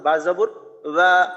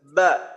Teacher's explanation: ঠোঁটের সাথে ঠোঁটে একটু চাপ দিয়ে উচ্চারণটা করি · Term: বা শক্ত